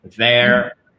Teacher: Là, vos cordes vocales, elles vont bouger parce que c'est un hard TH.